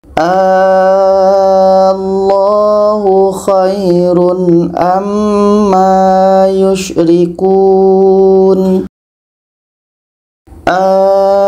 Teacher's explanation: Ini mad badalnya bertemu dengan huruf yang ada tasydid. Cara bacanya kita panjangkan 6 harakat baru masuk ke huruf yang ada tasydid. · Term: mad farqi